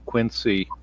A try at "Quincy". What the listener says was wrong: It's pronounced Quincy with a Z. It's pronounced Quincy, not Quincy.